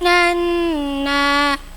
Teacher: gunah musyaddadah nun tasdid dengung tiga harakat